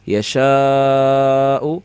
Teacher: یا زبر یا، شین الف زبر شا، یشا حمزہ پیش او، یشاء وقف کے اندر یشاء حمزہ میں جھٹکا دیں گے، ساکن ہو جائے گا